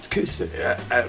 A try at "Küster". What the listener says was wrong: Eu digo Kister pra facilitar, né? Mas o I, você faz boca de U e fala I.